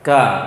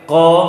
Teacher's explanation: Ka, tapi ko kuat. Tekanan ke langit. Bedanya. Jadi dimasukkan saja pada dasarnya, digolongkan ke dalam huruf isti'la.